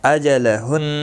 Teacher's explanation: حرکت والے حرف کو جلدی پڑھیں، اور نون مشدد پر گنہ ہوگا